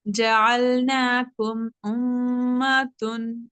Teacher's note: جعلناکم امتن، یہاں پہ میم ساکن پہ غنہ نہیں ہوگا، مگر جو امتن میں جو میم مشدد ہے نا اس پہ غنہ تو ہوگا کیونکہ میم مشدد پہ غنہ ہوگا۔